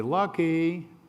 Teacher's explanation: in calling the dog, you say Lucky, and there's that little da da. And that's called a minor third in music.